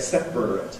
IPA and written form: ˈsepr̩ət (separate)